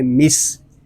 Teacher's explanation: حمزہ واو زبر او، میم سین زیر مس، او مس. سین حروف صفیریہ میں سے ہے، اس میں سیٹی کی آواز آئے گی